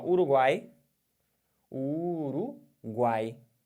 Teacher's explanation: quando você fala Uruguai, não altera nada tampando o nariz. Por quê? Porque você não tem nenhum som nasal aqui. O som de 3 vogais, faladas pela boca apenas, tritongo oral.